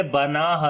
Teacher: نون کو لمبا کریں گے، کھڑی زبر ہے، ہا کو لمبا کریں گے، الف مدہ ہے